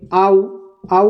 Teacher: ऐसे स्वर जिनको उच्चारित करने में हमारी ओष की आकृति गोल होती है उन्हें वृत मुखी कहा जाता है · आऔ को बोलने में लास्ट में क्या हो रहा है होठ गोल हो रहे हैं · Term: वृत्त मुखी